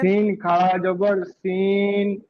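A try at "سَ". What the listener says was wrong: না হয়নি। সিন খাড়া যাবার সা হবে। সিন কেন হবে?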